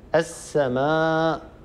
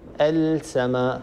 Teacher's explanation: الصواب أن تدغم اللام في السين الآتية بعدها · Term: الإدغام الشمسي